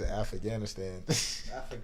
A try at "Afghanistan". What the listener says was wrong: Afghanistan. Is that how you say it? How you say it? Afghanistan. Afghanistan. Afghanistan. Afghanistan. Afghanistan.